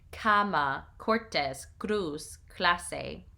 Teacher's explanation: In all other cases, the C in Spanish has the hard C of the English, the hard sound of the English K.